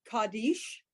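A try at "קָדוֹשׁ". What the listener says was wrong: Nope, that's our new vowel that's being propped up with the O on top.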